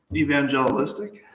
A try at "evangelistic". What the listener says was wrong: No, but say. Don't break it up into syllables like that. Just say it like football.